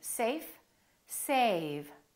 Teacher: Notice how A was longer with the V than with the F.